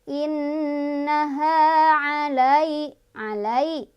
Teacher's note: Innaha 'alai harf lin atau huruf lin karena ada ya sukun, sebelumnya ada fathah, dibacanya dilunakan